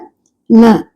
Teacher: நாவின் நுனி மேல்வாய் அன்னத்தின் முன்பகுதியை தொடுவதால் ந பிறக்கிறது